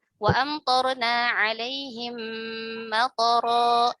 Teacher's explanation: Misalkan wa amtorna alaihim matara, matara itu toknya, perhatikan di kata matara itu harusnya toknya itu tidak dibaca panjang. Dia dibaca pendek.